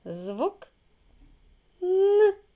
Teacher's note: перший звук у слові Ніна звук н він який приголосний м'який пам'ятаємо що приголосні звуки перед голосним і пом'якшуються позначаємо двома рисочками